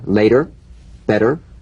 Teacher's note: the medial T becomes a soft d